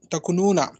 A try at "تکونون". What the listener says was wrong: کو کو مدہ کرے مولانا تکونون تکونین, تکو کو ذرا لمبا کھینچے.